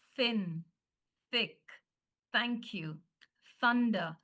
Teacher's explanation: that's your unvoiced. It doesn't vibrate.